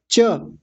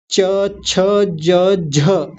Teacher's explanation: च छ ज और झ और साथ में य, इन वर्णों का उच्चारण जब हम करते हैं तो हमारी जीभ ऊपर जहां जाके जहां लगती है उसको तालु कहा जाता है। आप बोल के देखिए, च, च बोलने में जीभ हमारी जहां जाके लगती है उसी को तालु कहा जाता है।